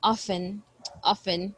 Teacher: there is a letter t here but i don't pronounce it